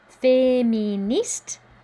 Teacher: Don't pronounce the E. The E makes the T pronounceable though, so we do hear this T.